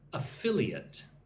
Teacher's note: A-fill-e-it. 4 syllables. Put the emphasis on the second syllable.